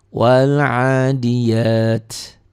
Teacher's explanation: Jangan, hamas itu bukan jadi S ya. Wal adiyat tetap T tapi ada pecah.